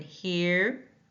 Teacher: Start with a high front tongue, mouth is relaxed, then close mouth halfway.